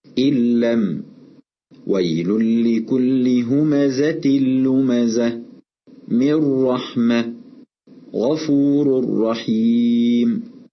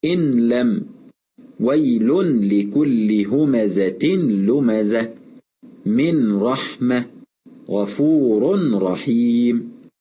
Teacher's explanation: أدغمنا النون الساكنة أو التنوين في اللام أو الراء، ونلاحظ أن هذا الإدغام تم بدون غنة. ومن الخطأ أن نظهر النون الساكنة أو التنوين، فلا نقول إن لم. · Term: الإدغام بغير غنة